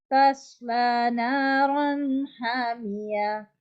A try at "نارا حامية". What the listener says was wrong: Okay, we will not stretch here. The next letter is straight letter, okay?